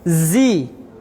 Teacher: Zi-nya harus berdesis juga, harus safir.